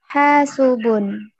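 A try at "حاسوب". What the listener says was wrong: Pakai sin, bukan pakai sya. Hasubun.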